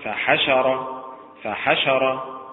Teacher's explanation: فحشر متعل بالنبر على حركة الحاء